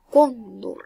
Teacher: Lleva la mayor fuerza de voz en la con. Una, dos. Es una grave.